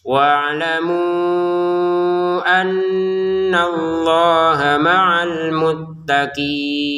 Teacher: Nun bertasydidnya kita dengungin ya. Untuk al-muttaqinnya dibaca 6 harokat.